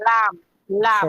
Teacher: জিহ্বার আগা কিনারা তার বরাবর উপরে দাঁতের মাঝখানে লাগায়